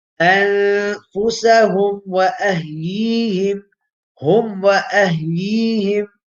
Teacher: And the makhraj of the meme and waw being the same. Yeah, so meme is pronounced using both lips, shafatain. Waw is pronounced by both lips. Both are the same makhraj.